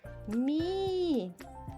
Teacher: И смягчает согласную, которая стоит впереди. Мы читаем ми, мягко.